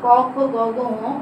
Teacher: কারণ কণ্ঠধ্বনি হওয়ার কারণ হচ্ছে কি এই পাঁচটি যখন বর্ণ আমরা উচ্চারণ করব তখন জিহ্বার গোড়ার দিকে নরম তালুর পশ্চাৎভাগ তখন জিহ্বা স্পর্শ করে, যার কারণে এগুলোকে আমরা বলছি কি কণ্ঠধ্বনি